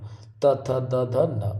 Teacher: बिना दांत के टच करे हुए, दंत के टच करे हुए इनका उच्चारण नहीं हो सकता, तो इनको दंत कहते हैं। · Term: दंत व्यंजन